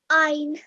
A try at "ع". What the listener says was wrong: Now an alif and ayn are two different letters, so you must not get confused between the two. So يفعلون.